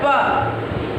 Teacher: जब हम पे का उच्चारण करते हैं तो दोनों लिप्स जो हैं हमारे आपस में मिलते हैं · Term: ओष्ठ